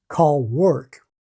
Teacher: In Ireland, you can hear clear L and dark R,